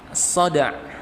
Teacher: Dalnya diqalqalahkan jelas, ainnya juga dapat.